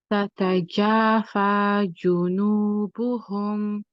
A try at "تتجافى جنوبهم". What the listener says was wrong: Yeah, just be careful of that first jim. When you want to make sure that from the beginning you're making a good oo sound, because the rest are all much better.